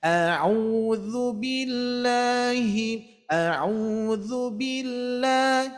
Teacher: Ingat ya, dubillahnya mengangkat.